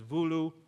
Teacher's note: So, Maan has a contrast between two vowels u and o in Malagasi. They have merged into a single vowel which somewhat confusingly and I apologize for this is written with the letter O but pronounced oo